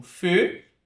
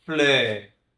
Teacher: o EU, ele pode ter esse som mais fechado, como feu, ou um som mais aberto